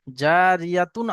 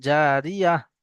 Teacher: আয়াতের শেষে গোল তা থাকলে সেটা হা সাকিনের মতো পড়তে হবে।